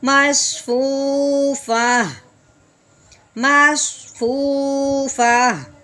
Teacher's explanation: تا کو ختم کرتے ہیں اور صرف ہا کی آواز نکالتے ہیں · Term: گول تا